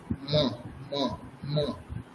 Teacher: ময়ের উচ্চারণ হচ্ছে ঠোঁটের সাথে নাক